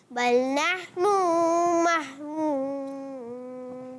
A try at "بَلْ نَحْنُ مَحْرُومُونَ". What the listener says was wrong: آپ نے نون کی پیش کو لمبا کر دیا، یہ نہیں کرنا، بل نحن نہیں کھینچنا، بل نحن محرومون.